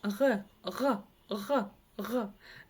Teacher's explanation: Нужно просто откашлиться через букву Г обыкновенную и, ну, отхркнуться, да, и у нас получится буква Г, г, г, либо произнесите букву Х, но сделайте её более звонкой, и у вас получится звук г, точнее буква, да, звук, буква.